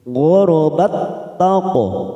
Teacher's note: Wa idza langsung masuk pada huruf ta, karena kita tadi waqaf di sini, maka saat kita wasol atau terus tak sukun ini bertemu dengan huruf ta sama dengan yang tadi idgham mislain, hanya masuk tanpa mendengung, masuk pada huruf yang kedua